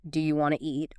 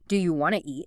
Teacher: Sometimes sounds are dropped entirely, like the T often disappears in want to.